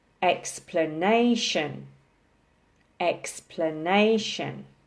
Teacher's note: four syllables also with the emphasis on the third syllable